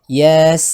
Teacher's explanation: Sin itu wajib dibaca panjang 6 harokat